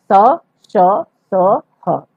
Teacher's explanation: जिन वर्णों के उच्चारण के समय रगड़ खाकर मुख से उष्मा निकलती है उन्हें उष्ण व्यंजन कहते हैं।